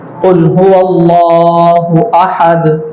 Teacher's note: عربی کے اندر جو ہے وہ دو طرح کے، ایک ہوتا ہے کاف ہوتا ہے جو منہ کی طرف سے دانتوں کی طرف سے جو ہے وہ نکلتا ہے، اور ایک ہوتا ہے قاف جو جڑ زبان تالو سے مل کر کے ادا ہوتا ہے. جو زبان کا جو جڑ ہے اس کو تالو سے ملائیں گے تو قاف ادا ہوگا.